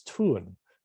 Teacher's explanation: The O having become an U, which only happens in Cholan languages to give us tun.